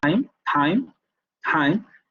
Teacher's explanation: cuando el ápice de la lengua se pone en contacto con los alveolos